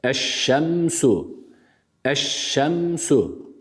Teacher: Elif Lam takısından sonra Şemsi harflerden Şin harfi gelmiş Dolayısıyla idgam gerçekleşiyor Ama herhangi bir gunne söz konusu değil Burada da yapmıyoruz gunne olabilmesi için nun harfinin olması şart nun